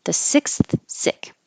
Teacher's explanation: So your tongue is behind for the S, sick, and it's out for the TH, and then back in for the S. So it's a lot of movement.